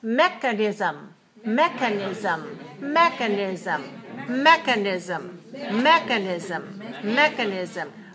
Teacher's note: and mechanism mechanism for one the second syllable is not stressed the first syllable is stressed so watch the K sound not so much air